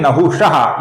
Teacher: इसके विसर्ग का ओ हुआ है क्योंकि आगे वो ये मृदु व्यंजन आया हुआ है